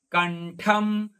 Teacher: ಠ ಮುಂದಿನ ಅನುಸ್ವಾರ ಅರ್ಧ ಮ. · ನಿಧಿಫ್ ಪಾತು ಧಿ ಮಹಾಪ್ರಾಣದ್ದು. ಕಂಠಂ ಕ, ಕ ಮುಂದಿನ ಅನುಸ್ವಾರ ಅರ್ಧ ಣ. ಅದೇ ತರನಾಗಿ ಠ ಮಹಾಪ್ರಾಣದ್ದು.